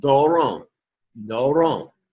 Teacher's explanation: The circumflex, you would start low, go high, and doron.